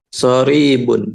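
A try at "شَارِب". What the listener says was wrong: Syaribun ya. Jadi huruf awal kasih alif panjang. Syaribun.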